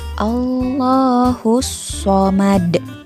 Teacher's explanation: di huruf So-nya itu jangan dibaca panjang ya karena tidak ada matobi'i. Jadi harus ditekan dan dibaca pendek.